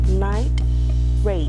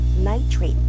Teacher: you observe a juncture or a pause or a silence between the words to make them clear